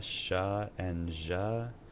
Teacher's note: Sha and ja is called a postalveolar fricative because it's further back than the alveolar ridge.